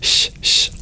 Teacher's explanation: the S with the accent is just your regular palatal sibilant